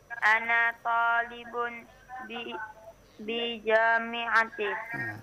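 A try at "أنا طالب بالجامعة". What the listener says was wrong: Nah, disambung. Ana talibun bil jami'ati.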